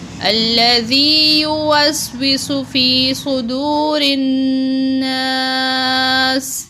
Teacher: یہاں پر سین پر سیٹی کی آواز نکلے گی، اور سین پہ سو، سین کو لمبا نہیں کیا جائے گا۔